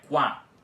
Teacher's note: aqui no início da palavra o Q, que tem som de K, fica pronunciado, e o U também com o som de U dele fica pronunciado